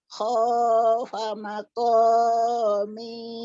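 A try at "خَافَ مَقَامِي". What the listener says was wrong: Banyak pendek. Pokoknya panjang betul. Fa-nya pendek. Ini yang panjang. Fa-nya pendek ini.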